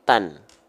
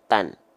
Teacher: huruf yang berharokat fathatain, maka dia nggak dibaca dengan vokal A lagi, tapi dengan vokal an. Maka taknya di sini dibaca menjadi tan.